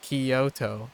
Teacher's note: it's the second syllable that an American would emphasize Kyoto as instead of Kyoto as in the first syllable anyways